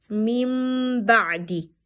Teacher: we ignore reading of nun and we changing nun into mim